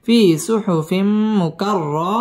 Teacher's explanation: في মধ্যে তবাঈ এক আলিফ টান দিয়ে পড়তে হবে ফি সুহুফিম তানবিনের বামে মিম আসছে ইদগামে বা গুন্না এখানে গুন্নাহ করে পড়তে হবে